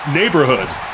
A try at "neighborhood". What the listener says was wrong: You didn't pronounce the U in that. Neighborhoods.